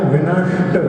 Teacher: जहां से आप रा बोल रहे हैं वहीं से जो है शा बोलना है आपको, तो वो षट्कोण का सा निकलेगा। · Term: मूर्धन्य शा